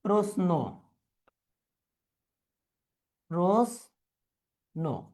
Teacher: তারপরে এই যে প্রশ্ন, প্রশ্ন কিন্তু আমরা প্রশ্ন মানে তালব্য শ উচ্চারণ করে অভ্যস্ত, কিন্তু এখানে হবে প্রশ্ন, অর্থাৎ আমরা প্রশ্নটাকে দন্ত স দিয়ে উচ্চারণ করতে হবে